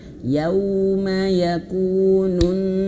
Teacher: Nah, di sini harus ditahan ayah bunda. Nun bertasydid itu harus ditahan ya. Bukan hanya sekedar berhenti, tapi ee tidak lama gitu.